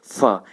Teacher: लेकिन जब आप फ बोलेंगे, फ, तो उसमें होंठ, नीचे वाला होंठ आपके ऊपर वाले दांतों में टच होगा और एक ध्वनि के साथ एक हवा भी बाहर निकलेगी मुंह से